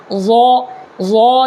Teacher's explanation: اپنی زبان کی نوک کو جو ہے، زبان کا جو نوک ہے نا، اس نوک کو سامنے میں جو 2 دانت نیچے میں ہے، اس دانت کے جڑ میں لگانا ہے، تو ضا نکلے گا